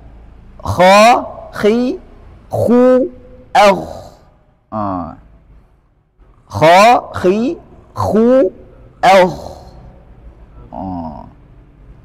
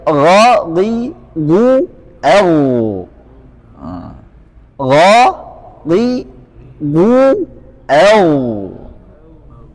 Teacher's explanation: Tenggorokan ujung atau ujung tenggorokan. Artinya tenggorokan bagian atas. Makhrajnya huruf ghain dan kha. Ingat bahwa ini berharakat fathah.